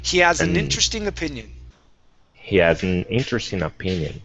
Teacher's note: we use that N to spring into the word interesting.